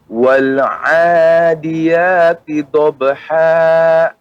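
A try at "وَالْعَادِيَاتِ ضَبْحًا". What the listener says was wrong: Ya, pengucapan huruf dha lebih dalam lagi Bapak, yaitu tepi lidah, ya, kedua tepinya mengenai gigi geraham atas. Wal 'adiyati dhabha.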